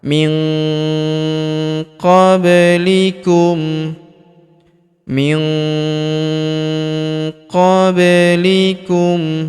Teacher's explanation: huruf nun sukun bertemu huruf qo maka nun sukunnya melebur ke huruf qo kita baca dengung dan samar dengungnya kita tahan dua sampai harakat min qoblikum min qoblikum Huruf ba berharakat sukun kita pantulkan atau kita qalqalahkan.